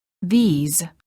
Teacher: the word these is plural and is pronounced with a long vowel e and a z sound